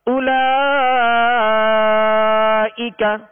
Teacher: اب اولا لام کے اوپر کھڑا زبر ہے، یہ کھڑا زبر الف مدہ کے قائم مقام ہے، اور اس الف مدہ کے بعد حمزہ اسی کلمہ میں ہے، لہذا مد متصل ہوگا اور اس کو ہم کھینچ کر پڑھیں گے